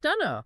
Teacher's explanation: it is so heavily reduced that the pronoun I is often dropped entirely. It can function as a standalone, complete sentence. · It eliminates the negative auxiliary verb, the internal vowel, and often the initial subject pronoun when the context allows for that much efficiency.